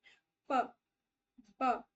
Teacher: इसमें हमारे दोनों होठ एक साथ जुड़ेंगे प तो ये बाय लेबियल हो गया बाय मतलब टू लेबियल मतलब लिप्स ठीक है लेबियल लेबियल मतलब लिप्स दो लिप्स एक साथ जुड़ गए क्लोजिव मतलब एकदम से हवा आई क्लोजिव मतलब बस्ट ऑफ एयर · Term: प्लोजिव